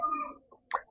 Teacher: ठे होता है मूर्धन्य महाप्राण और अघोष